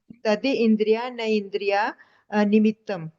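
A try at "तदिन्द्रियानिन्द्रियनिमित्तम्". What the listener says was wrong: न इंद्रिया है ही नहीं, ननिंद्रिय, हाँ ई की मात्रा है, वो तो उसको न को है ना, दी को है ना, ई करके कोई शब्द नहीं है। तदीन्द्रिया नंद्रिय निमित्तम,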